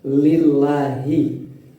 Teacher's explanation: Alhamdu, ada bacaan mim sukun, kemudian du bacaan pendek. Lillahi, ada bacaan lam jalalah, dibaca tipis.